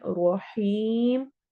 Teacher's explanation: غفور رحیم، غفو واو مدہ، رور، رو دونوں موٹی پڑھی جائیں گی، اور رور، رو کو رو سے ملانا ہے، رحیم، ہا حروف حلقی میں سے یا مد ہو رہی ہے اور مد عارض وقفی ہو رہی ہے